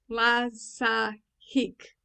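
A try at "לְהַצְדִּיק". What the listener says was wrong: Dik. Dik. No, like a D. Dik.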